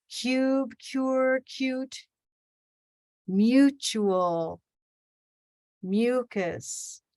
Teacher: listen maybe there's an invisible y in there